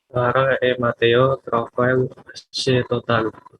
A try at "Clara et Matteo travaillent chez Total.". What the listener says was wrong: saya masih mendengar travail chez Total.